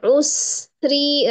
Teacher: karena ro kasr dibaca tarqik atau tipis